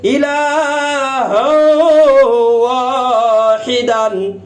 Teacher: এখানে তানবিনের বামে ঈদগামে বাগুন্নার হরফ ওয়াও পাওয়া গেছে, এই জন্য বাগুন্না হরফ ওয়াও এর উপরে তাসদিদ দিয়ে মিলাইয়া গুন্নার সহিত পড়া হইতেছে